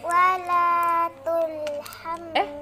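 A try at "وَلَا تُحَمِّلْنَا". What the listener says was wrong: Dari mana tul? Tak ada lam. Wala tuhammilna. Enggak ada lam sayang. Dari mana lam? Tul, mana ada tul? Di sini tak ada lam. Lam hanya berjumpa dia dengan mim. Wala tuhammilna.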